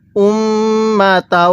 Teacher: মিমের মধ্যে গুন্নাহ করব কারণ মিমে নুনের তাজদি গুন্নাহ করা ওয়াজিব